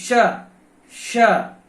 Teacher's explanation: तो अब क्लियर हो गया होगा कि जो श है, जिसको आप शीटी वाला श कहते हैं, इसका नाम है तालव्य श। क्यों? क्योंकि इसका उच्चारण तालु से होता है